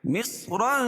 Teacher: صاد کو پر پڑھیں گے کیونکہ حروف مستعلیہ میں سے، اور را بھی پر پڑی جائے گی کیونکہ را کے اوپر دو زبر کی تنوین ہے.